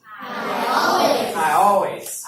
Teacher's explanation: we got the two vowels blending